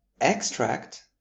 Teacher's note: In the noun form where the stress is on the first syllable